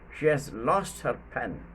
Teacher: lost and pen, verb and noun are stressed